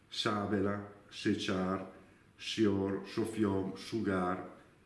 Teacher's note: in inizio di parola la s è sempre sorda